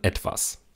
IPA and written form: ˈɛtv̥as (etwas)